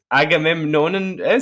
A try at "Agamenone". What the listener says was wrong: Agamenone. Why are you putting the M in the middle? Like, there's no M. There's one M. Agamenone.